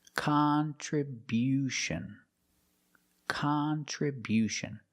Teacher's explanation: We change the stress to the first and third syllable.